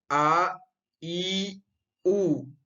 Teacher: इसका उच्चारण में हमें अधिक, जितना समय ह्रस्व स्वर के उच्चारण में लगा उससे अधिक समय लगा, यानी 2 मात्रा का समय लगा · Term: दीर्घ स्वर